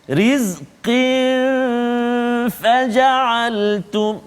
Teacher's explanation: tanwin bertemu dengan fa, rizqin faja'altum, dua harakat juga, dengung kat situ